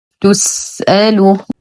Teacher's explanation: نتم ضمة التاء بعدها حرف السين نعطيه الهمسة والرخاء والاستفال